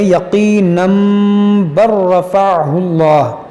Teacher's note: اب یہاں پر دیکھیں چھوٹا میم بنا ہوا ہے، کیوں بنا ہوا ہے؟ کیونکہ تنوین کے بعد یہاں پر با ہے، اگر ملا کر پڑھیں گے تو پھر اقلاب کا قاعدہ لگے گا، یعنی اس کو پڑھیں گے یقینا بر رفعہ اللہ.